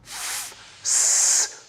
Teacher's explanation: when we restrict the flow of air, as in f, s, producing a chaotic, noisy sound